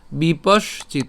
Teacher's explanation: আমরা এই বিপস তালব্য পর্যন্ত উচ্চারণ করে তারপরে হচ্ছে চিত উচ্চারণ করছি